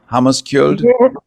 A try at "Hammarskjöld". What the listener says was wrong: The writing is misleading. It's actually Hammarskjöld. You don't pronounce the K.